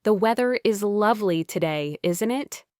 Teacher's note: how isn't it flows together almost like one word